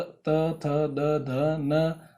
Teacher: जिनका उच्चारण स्थान करने पर हमारा जीभ दांतों पर टकराती है, इन कारण इन्हें दंती कहा जाता है।